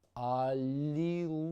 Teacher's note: The first L is soft, the second L is hard.